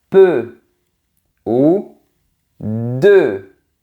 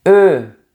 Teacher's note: E, comme dans les mots peu ou de. C'est un son très fermé.